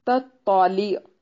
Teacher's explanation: ता दो नुक्तों वाला बारीक और दूसरा तो उसको मोटा पढ़ेंगे।